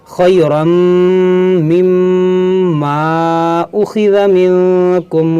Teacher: یہاں پہ میم مشدد ہے تو اس میں غنہ بھی کریں گے